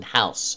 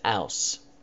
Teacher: We have the dropping of sounds as well, for example, in house, and people would pronounce it ouse.